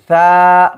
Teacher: সায়ের মাখরাজ জিহ্বার আগা সামনের উপরে দুই দাঁতের আগার সঙ্গে লাগায়